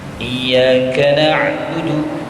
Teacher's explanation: jaga betul-betul ain itu mati, tidak ada bunyi be-nya sedikit pun